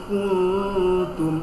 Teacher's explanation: নাকের ভিতরে লুকিয়ে গুণা করতে হবে